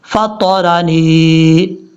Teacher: نون کو یا سے ملاتے ہوئے یہاں یا مدہ ہے، ایک الف کی مقدار لمبا کریں گے۔